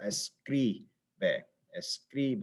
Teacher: That's the stressed syllable, escribe, escribe. It goes up in that second syllable and the second to last syllable.